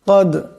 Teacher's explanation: দাল সাকিন, দাল কলকলার হরফ, আওয়াজটিতে একটি টক্কর খাবে